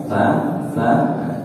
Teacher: hampir sama tapi tempat keluarnya beda beda kalau t itu litariah ujung lidahnya menyentuh ujung gigi seri atas · Kalau sa itu lisawiyah, ujung lidahnya menyentuh ujung gigi seri atas, sa. Sedangkan sin masuknya asaliyah, ujung lidahnya tidak keluar.